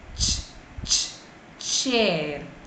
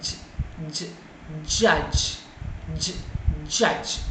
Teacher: There will be a narrow gap in your mouth and it will be produced through a lot of friction. So combination of both the plosives and the fricatives we called as the affricates